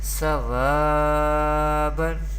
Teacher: Sod zabar fa, واو ألف زبر و سوا بادو زبر بن سوابا. Here Sod is belong to Mustalia letters, Mustalia family, and we pronounce it always with thicker voice in every condition, and there is zabar before vaw sakin.